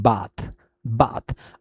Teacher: जो ए साउंड होता है लॉन्ग एंड ओपन